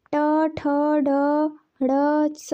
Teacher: Next है मूर्धन्य ट, ठ, ड, ड़, स मूर्धा से निकलता है।